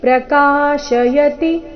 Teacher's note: ಪ್ರಕಾಶಯತಿ ಕ ಮಾತ್ರ ದೀರ್ಘ ಈ ಶಬ್ದದಲ್ಲಿ